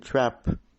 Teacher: And short A as in trap, fronted a bit.